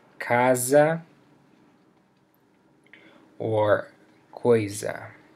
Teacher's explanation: S between two vowels also makes a Z sound